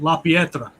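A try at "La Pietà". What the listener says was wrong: It's a pieta. There's no R,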